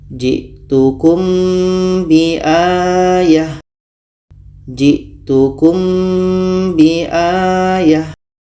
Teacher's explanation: ada mim mati ketemu ba ah ini kita baca samar dan dengung kita baca jitukum biayah jitukum biayah Jadi kesimpulannya adalah ikhfa Hakiki · Ada mim mati bertemu ba. Ini kita baca samar dan dengung. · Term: ikhfa syafawi